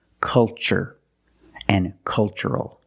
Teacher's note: the first syllable is a short u like cup and up. Uh uh make a relaxed sound. Culture and cultural.